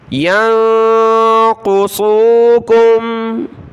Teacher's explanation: ثم لم ینقصوکم، یا کو نون ساکن کے ساتھ ملائیں گے، نون ساکن کلرفل ہے، ناک میں آواز پیدا کریں گے۔ قاف اور صاد دونوں کلرفل ہیں، ان کو موٹا پڑھنا ہے۔